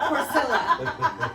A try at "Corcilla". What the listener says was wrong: So Latin, not Hispanic. double L is not the Y that is in Hispanic language.